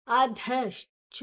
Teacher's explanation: ಧ ಮತ್ತೆ ಧ 2 ಕೂಡ ಮಹಾಪ್ರಾಣ, ಚೋ ಮಾತ್ರ ಅಲ್ಪ ಪ್ರಾಣ.